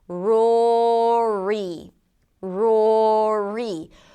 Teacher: Bring the tongue up and finish it up with a high E. Pull the lips to the sides of it.